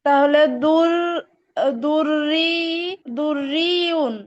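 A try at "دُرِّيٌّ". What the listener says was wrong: হ্যাঁ, সঠিক হয়েছে।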